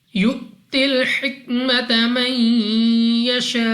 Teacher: حمزہ ساکن جھٹکا دے کر پڑھتے ہیں